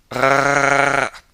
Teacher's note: technically the R is a rolled R in the throat · it's rolled in the throat, which sounds like R. Kind of sounds like gargling, actually.